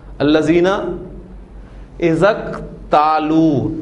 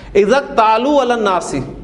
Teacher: ملا کر پڑھیں گے تو حمزۃ الوصل لکھنے میں رہے گا, پڑھنے میں نہیں آئے گا